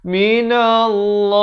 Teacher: Lafz jalalah dibaca tebal dua harakat. Himin idhar halqi.